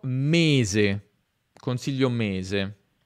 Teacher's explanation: s con la vibrazione delle corde vocali